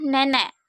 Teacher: ciri-ciri agak rendah depan tak bulat dengan contoh kata nenek